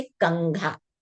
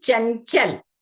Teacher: चवर्ग का जो पंचम अक्षर है, यहां पर बच्चों ये बात आप याद रखिएगा कि कंघा में कवर्ग का जो पंचम अक्षर है उसका साउंड आएगा और चंचल में जो चवर्ग का पंचम अक्षर है उसकी ध्वनि उच्चारण के समय आपको ध्यान रखनी है